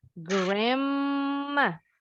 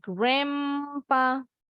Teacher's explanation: Jadi huruf D-nya silent. Tinggal huruf N-nya. Tapi huruf N-nya berubah bunyi jadi M.